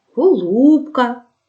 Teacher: голосний о ненаголошений перед складом з наголошеними у і вимовляється з наближенням до у